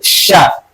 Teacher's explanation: Makhraj shin ada di wasful lisan ya, di tengah-tengah ya lidah ya, di tengah-tengah lidah bertemu dengan langit-langit. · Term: huruf shin